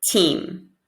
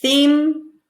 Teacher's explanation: tongue in for T, tongue out for TH